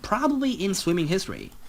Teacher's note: And notice this rising intonation here. Probably it shows that he's not sure. He's making a guess.